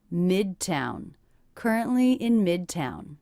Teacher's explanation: Stress on the first syllable here, and that is a true T.